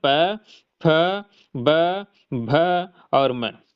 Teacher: क्योंकि इनकी उच्चारण है या इनका जो आवाज है हमारी दोनों होंठों की मदद से निकलता है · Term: औष्ठ्य वर्ग